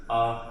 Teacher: आ बोलेंगे तो मध्य बीच से ही निकलेगा, जीभ के बीच से ही आ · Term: मध्य स्वर